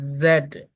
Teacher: জেড বলার সময় মুখের মধ্যে একটা কম্পন হবে